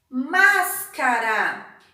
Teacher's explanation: a sílaba acentuada é a antepenúltima então ela é uma proparoxítona